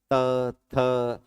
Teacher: हर बार जिह्वा दोनों तरफ से दांतों से काटी जा रही है।